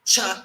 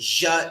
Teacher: Cha is voiceless. Ja is voiced.